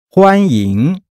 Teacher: Welcome, a first tone followed by a second tone.